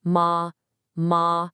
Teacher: the second tone is a rising tone. It starts in the middle and goes up. Kind of like you're asking a question.